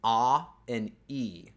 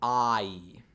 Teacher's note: the vowel I is actually two different sounds It's A and E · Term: the I sound